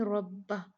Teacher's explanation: را پہ ڈائریکٹ فتحہ ہے، اس کو ہم ہیوی پڑھ دیں گے